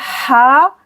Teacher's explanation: हा को हलक के दरमियान से हा खींचेंगे 2 सेकंड के लिए